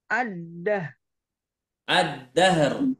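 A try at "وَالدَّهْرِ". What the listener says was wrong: ada r-nya di ujung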